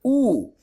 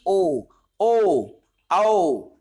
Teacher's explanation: यू उच्चारण करके देखो यू हमारे होंठ गोल हो गए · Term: वृत्त मुख